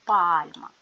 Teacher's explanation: а ділимо на склади пальма ставимо наголос пальма називаємо приголосні звуки п твердий ль м'який цей звук став м'яким тому що після букви стоїть буква м'який знак яка сама по собі звууку не позначає але пом'якшує попередній приголосний